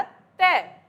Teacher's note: तय बोलते हैं तो ऊपर वाले दांत हमारी जीभ पर टच होते हैं। ठीक है, दांत ऊपर नीचे होते हैं, जीभ ऊपर नीचे नहीं होती, तो ऊपर वाले दांत जीभ पे टच होते हैं, तो इसीलिए दांतों का इस्तेमाल होता है, इसलिए हम इन वर्णों को बोलते हैं दंत्य।